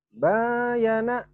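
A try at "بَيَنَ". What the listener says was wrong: Nggak ada yang panjang.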